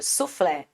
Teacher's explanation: mesma acentuação ou seja suflé aqui a gente tem essa separação o flé é a sílaba mais forte automaticamente a última sílaba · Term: oxítona